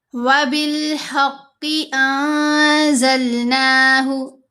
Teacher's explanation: وَبِالْحَقِّ أَنزَلْنَاهُ، انزلنا نہیں پڑھنا، نون ساکن کے بعد زا آ رہا ہے، یہاں پر ہم نے احفا کرنا ہے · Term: نون ساکن کا احفا